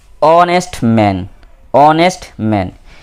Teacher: We have h in front and here h is silent. Honest, and it sounds like a vowel, so we have to use n instead of using a.